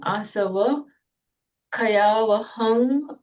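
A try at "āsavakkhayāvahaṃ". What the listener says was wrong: Okay, but you made a slight pause there. Asava Kayava. Can you try and do it as one? Asava Kayavaham.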